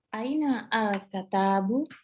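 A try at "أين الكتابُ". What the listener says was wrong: Ainal kitabu, nggak perlu lagi aina al-kata. Ainal langsung. Ainal kitabu.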